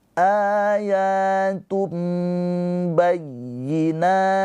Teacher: Ayatum tum bukan tun bukan ya. Tapi ke mim tum ditahan dua harakat ketika sampai mim. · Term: iqlab